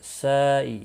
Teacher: یہاں پر مد متصل ہے، 4 الف کے برابر کھینچ کر پڑھیں گے